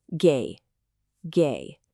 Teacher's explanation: A really common mistake for students is not starting high enough. It has to be noticeably higher than your normal speaking voice. · The first tone is high and it's level. That means it doesn't go up, it doesn't go down, and it doesn't dip. You have to hold it steady at a pretty high pitch. · You have to hold it steady at a pretty high pitch. You kind of have to find a note in the upper part of your voice and just hold it there. · Think of it like a dial tone on an old phone. Just one flat continuous sound. A really common mistake for students is not starting high enough.